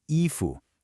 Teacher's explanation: a high first tone and a rising second